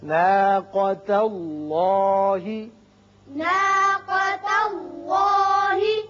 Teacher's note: ناقہ نہیں پڑھیں گے، ناقا قاف کو پر پڑھتے ہیں